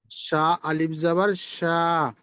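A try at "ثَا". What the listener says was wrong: এটা তো শিন হয়ে গেল, শিন আলিফ জবর শা হয়ে গেল। তাহলে এটার এটার মধ্যে পার্থক্য কি হবে? উচ্চারণে তো পার্থক্য হবে।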